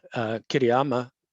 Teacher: the stress is on the 3rd syllable, but as an English first language speaker, it's not that clear to me that it's on the 3rd syllable.